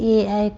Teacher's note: ए ऐ कंठ तालव्य है, कंठ और तालु से बोले जाते हैं